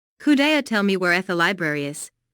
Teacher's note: Notice that library is stressed here because it is the word with the important information.